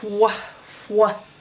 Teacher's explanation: It makes the wh sound, like you get a lot of wind coming out of your throat